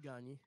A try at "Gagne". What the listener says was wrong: Gagne. C'est pas Gagné, son nom, c'est Gagne.